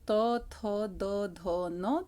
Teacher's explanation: जब आप त वर्ग के वर्णों को बोलते हैं तो आपके दांतों को हवा स्पर्श करते हुए निकलती है